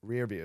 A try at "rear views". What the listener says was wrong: But you have to put the emphasis on views still.